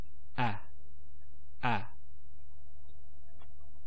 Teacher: the same sound ah back now just one to note is when we say the sound the a sound um you'll notice your mouth is open wide